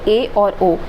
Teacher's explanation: अगर मुख से बात करें तो मुंह आधे से कम खुलता है, तो वो अर्ध संवृत्त होता है। आधे से कम, संवृत्त से कुछ अधिक, लेकिन मुंह आधे से कम खुलता है।